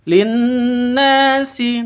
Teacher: Linnasi nun tasydid dengung 2 ketuk, gunnah musyaddadah, na panjang 2 ketuk.